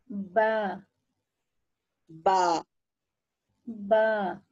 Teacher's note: آخر میں جو با اوتار الصوتیہ کو کھلا رکھنا, بند نہیں کرنا